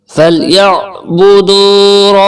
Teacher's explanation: عین کے اوپر جزم ہے, تھوڑا سا جھٹکا دیں گے. حلق کے درمیان سے عین نکالیں گے اور با پیش بو جلدی سے پڑھنا ہے.